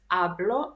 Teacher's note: Don't forget that in Spanish we don't pronounce hache (h) so this is pronounced ablo not hablo.